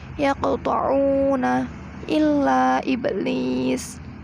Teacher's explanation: cara membacanya dipantulkan qalqalahnya dengan tidak begitu kuat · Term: qalqalah sughra